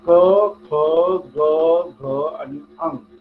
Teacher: Direct कंठातनं उच्चार केला, म्हणून त्याला कंठस्थ किंवा कंठज.